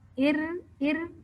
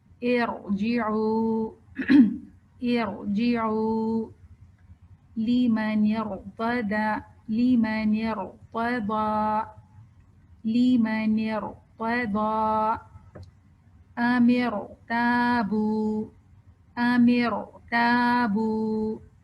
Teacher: تو ویسے تو ہم نے یہ پڑھا تھا نا کہ را سے پہلے اگر زبر یا پیش ہو تو را موٹا ہوتا ہے، لیکن یہاں پہ میں زیر ڈال رہی ہوں، مگر پھر بھی میں را کو موٹا پڑھ رہی ہوں حمزۃ الوصل کی وجہ سے